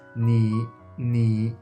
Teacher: when Chinese people pronounce the third tone, they usually keep it always low. They never raise it up.